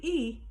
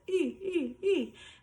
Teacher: you should have your tongue very forward, not back, but E. And as you say that E, your tongue kind of rounds and pushes forward just a little bit, E. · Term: forward vowel